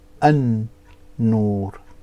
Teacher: we will then join the alif onto the noon and it will become an noor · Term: sun letters